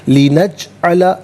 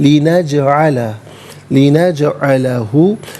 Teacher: وا لی نجعلہ، تینوں علیحدہ ہیں، ملا کر پڑھیں گے لنجعلہ۔ جیم ساکن ہے لیکن حرف قلقلہ ہے تو آواز لوٹتی بھی محسوس ہونی چاہیے